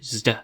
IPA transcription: sd